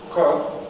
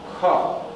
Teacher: А посередине, вот между ними, да, вот эти вот еще, второй столбец и четвертый, ну, четный, можно так сказать, это те же самые согласные, только с придыханием. Да, то есть тут на хинди написано альпа-прана, маха-прана.